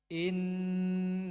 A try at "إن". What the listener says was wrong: Nah, ini hati-hati. Jangan ditamtik. Langsung. Inna. Jangan in. Nah, ini i-nya menjadi panjang. Tapi langsung saja. Inna.